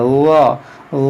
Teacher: دیکھیں یہاں پر ضا ہے، ضا کو نرمی سے پڑھیں، اس کو ضا نہ پڑھیں بلکہ ضا، دیکھیں ضا اس میں ایک نرمی ہے، سیٹی نہیں ہے، سختی نہیں ہے